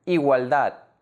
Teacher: The last syllable ‘DAD’ is the stressed syllable.